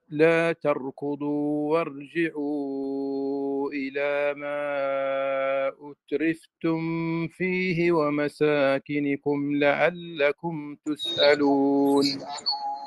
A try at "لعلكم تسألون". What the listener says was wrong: لا ما في إخفاء أترفتم فيه على طول واحذر لدى واو وفا أن تختفي